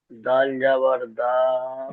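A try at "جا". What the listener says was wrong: দাল না, এটা হলো জা, জা। জা আলিফ জাবার জা, জা আলিফ জাবার জা, ওটা রয়ের পরে যে জা, ওই জাটা।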